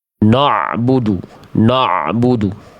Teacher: Banyak orang melafalkan ain itu karena pengin dapatin ainnya terlalu dalam jadinya kayak tebal.